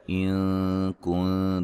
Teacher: نون ساکن کا باریک اخفا ہے